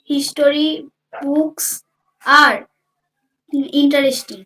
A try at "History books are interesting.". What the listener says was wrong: আচ্ছা, এইটার উচ্চারণ আমরা হিস্টোরি করব না, আমরা করব হিস্ট্রি। আমরা করব হিস্ট্রি। হিস্ট্রি books. এইটা ইন্টারেস্টিং এর জায়গায় বলো ইন্টারেস্টিং। ইন্টারেস্টিং, এইটা বলো, দ্যাট সাউন্ডস বেটার।